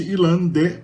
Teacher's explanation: esse sufixo te, que é pronunciado D nesse caso, por causa do N, que contamina ali, sonoriza a consoante